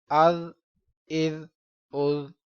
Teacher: ذال پر سختی نہیں کریں گے، سیٹی کی آواز نہیں آنی چاہیے۔ حمزہ ذال زبر از، حمزہ ذال زیر از، حمزہ ذال پیش از، از از از۔